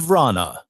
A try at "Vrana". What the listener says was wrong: I don't hear the A first. I hear it after. Vrana. It doesn't sound like there's an A in the front.